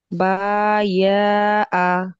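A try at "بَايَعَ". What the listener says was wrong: না, টেনে টেনে বলছেন কেন? বায়া, বায়া আ, হ্যাঁ কিন্তু মাঝখানে কিন্তু ইয়া আছে, এটা মনে রাখবেন। হ্যাঁ, মাঝখানের অক্ষরটা হলো ইয়া।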